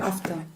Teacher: Does it have an R in it? No. Not in English.